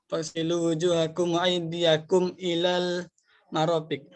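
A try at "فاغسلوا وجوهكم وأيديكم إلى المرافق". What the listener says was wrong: Ya, bagus ya.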